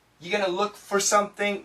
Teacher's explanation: You're gonna, many times we get rid of the R, you're gonna look for something.